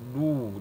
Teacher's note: Dan setiap arokat doma atau bunyi u, kedua bibir kita atau mulut kita, bibir bawah dan bibir atas, kedua-duanya dimunyungkan ya. Mulut kita dan bibir kita dimunyungkan apabila mengucapkan huruf dhamma atau harokat dhamma.